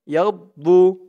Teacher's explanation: দোয়াদের উচ্চারণটা করার সময় মুখটা একটু ভরপুর হয়ে যাবে এমন মনে হবে। ইয়াউমা তাবয়াদ্দু, ইয়াউমা তাবয়াদ্দু উজু, উ, উ, জু, জু একালিফ টান, পেশের পরে ওয়াও সাকিন।